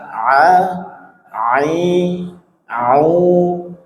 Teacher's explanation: Sekarang ain dari tenggorokan tengah